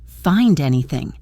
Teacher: The pitch of the voice rises at the end. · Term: rising intonation